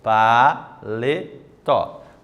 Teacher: Oxítona, certo? Então, a sílaba tônica, que é a sílaba mais forte, é a última.